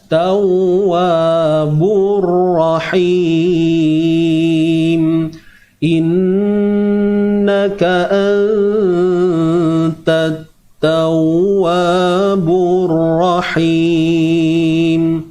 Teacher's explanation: So ra ni kena tebal ke nipis? Mestilah kena tebal sebab baris atas. · Dan tau ni jangan bunyi hidung. Tau, tu bukan idgham bi gunnah tuan-tuan, kena hati-hati.